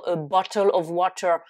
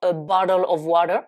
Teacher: l'accent américain qui a tendance à ne pas prononcer les T ou les prononcer comme des D